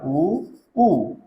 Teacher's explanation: ठीक है, ई के बाद में आपका आता है ऊ, और इनके उच्चारण स्थान के लिए आप कहेंगे, इनका उच्चारण स्थान ओष्ठ है और ये इसीलिए ओष्ठे कहलाते हैं